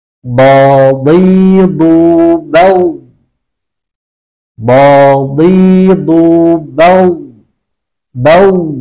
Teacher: Bergetar di tenggorokan, kemudian tidak ada aliran udara sama sekali.